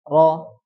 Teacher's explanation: ketika mengucapkan takrir tidak tidak berlebih-lebihan jadi sekedar cuman satu sampai dua getaran saja ro jangan lebih dari itu ro Nah itu karena dikhawatirkan kalau · Jadi sekedar cuma 1 sampai 2 getaran saja.